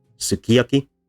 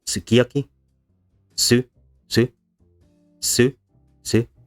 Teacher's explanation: Here the second syllable is stressed, so the su at the beginning is unstressed. And it becomes reduced and then for some speakers eventually deleted.